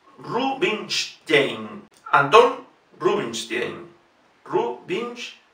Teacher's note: la S no es una S, sino una SH